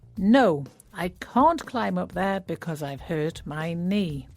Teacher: climb has a silent B at the end and knee starts with a silent K.